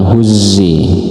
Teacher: Nah, ini seperti z. Wahuzzi harus ditekan huzzi karena dia ada tasydid